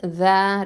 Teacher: ஜால் ஃபத்ஹா அலிஃப் மத்து ஜ, 2 ஹரக்கத்தை நீட்டணும்